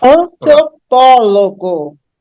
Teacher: a anti penúltima é a mais forte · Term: proparoxítona